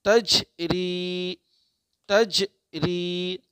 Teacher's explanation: قلقلہ ہوگا یہاں پہ چونکہ جیم ساکن ہے